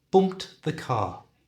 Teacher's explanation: there are a few ways in English that we pronounce words ending in Ed and in the case of bump it's a t sound